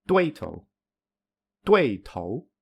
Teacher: you can hear that the second syllable is weaker than the first syllable and it is also weaker than when it is pronounced on its own